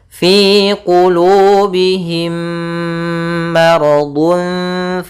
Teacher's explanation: bukan lagi mirip tapi sama yaitu adanya mim mati bertemu mim caranya adalah kita memasukkan mim yang pertama kepada yang kedua dan ditahan suaranya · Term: Idam Mimi, idgham mimi